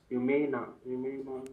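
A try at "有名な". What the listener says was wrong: ಯುಮೇನ್ ಅಲ್ಲ ಯುಮೇನ ಹೇಳಿಬೇಕು ದೀರ್ಘಾಕ್ಷರ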